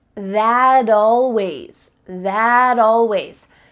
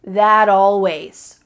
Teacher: we link together words by making the final T change into a D